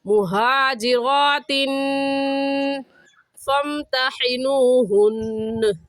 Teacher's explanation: मुहाजिरातिन, तिन पर गुन्ना करेंगे क्योंकि तनवीन के बाद हरूफ हल्की जो कि 6 हैं, हमज़ा हा, आइन हा, गैन खा, उनमें से कोई लफ्ज़ नहीं आया, इस वजह से इस तनवीन पर हम गुन्ना करेंगे।